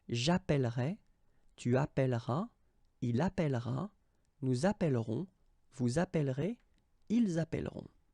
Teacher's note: you double the L, so it does open the sound of this E